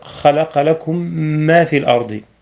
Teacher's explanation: فتكون أحكام الميم الساكنة على النحو التالي: أولا الإدغام، وذلك إذا التقت الميم وهي ساكنة بمثلها مع إظهار الغنة لحصول ميم مشددة، كما في قوله تعالى: خلق لكم ما في الأرض، إدغام مع الغنة.